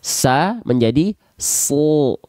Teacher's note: Contohnya adalah huruf sod. Misalnya huruf sod ketika dia berharokat baris atas, dia tidak dibaca dengan vokal A, namun keluarnya dia akan condong kepada vokal O